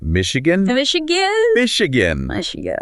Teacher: emphasis on that first syllable